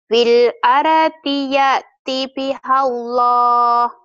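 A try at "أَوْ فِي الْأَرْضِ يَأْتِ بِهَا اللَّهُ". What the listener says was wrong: Kalau kalau kalau ini kan ada au-nya, au fil ardi, au-nya harus dibawa Au fil ardi ya'ti biha Allah. Au-nya dibawa.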